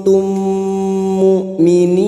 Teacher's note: kita samarkan bunyi nun sukun dan mendengung selama dua atau tiga harakat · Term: Ikfa Hakiki, ikfa hakiki